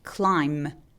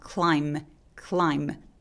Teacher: MB로 끝나는 단어들이 또 똑같이 소리를 내서 B 소리를 없애버리죠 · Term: B 발음 삭제